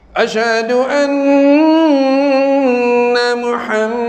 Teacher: Salah dengung. Dengung tu, dengung martabat kedua. Dalam huruf musyaddadah. Dia kena dengung naik sini.